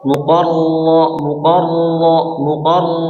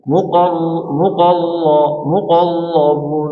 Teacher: Di sembunyikan sifat getarannya. Tapi harus jelas juga menjelaskan bahwasanya itu huruf ro